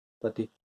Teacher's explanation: जल्दी से ई खत्म हो गया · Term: छोटी ई की मात्रा